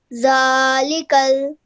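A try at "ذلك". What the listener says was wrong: Okay, just remember that this is a zal. So the is pronounced as you take your tongue and you touch it to your top teeth. Okay, do not elongate the lam with the kasra. It's just a simple kasra.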